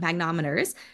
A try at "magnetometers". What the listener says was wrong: Magnetometer. There's an extra magnet in there. Magnetometers.